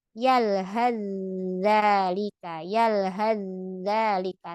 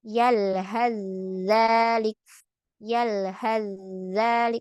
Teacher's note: Maka kita masukkan saja ke zal. Tidak usah sa-nya dibaca, langsung yalhadzalik, yalhadzalik, langsung ke ujung lidah. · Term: idgham